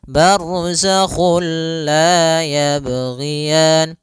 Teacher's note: Nah, idgham bila guna juga sendiri itu idgham yang kita namakan juga idgham kamil, yaitu kita memasukkannya secara utuh, secara seluruhan kepada huruf lam sehingga tidak menyisakan sedikit daripada bunyi huruf nunnya. Ya, sehingga langsung masuk barzakhul la, dan dia bila gunnah berarti tidak boleh disertai dengan gunnah, tidak boleh ada penahanan, tidak boleh barzakhul la, enggak boleh, tapi langsung saja barzakhul la yabghiyan. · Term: idgham bila gunnah